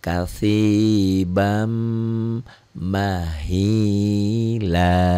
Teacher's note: Dua dibaca satu tapi jadi panjang. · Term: mad iwad